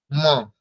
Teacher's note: পোষ্ঠ মানে ঠোঁট দুটি দিয়ে উচ্চারণ করতে হবে তার সাথে সাথে যেহেতু এটা পঞ্চম বর্ণ বর্গের পঞ্চম বর্ণ সেই জন্য নাসিকা সহকারে উচ্চারণ করতে হবে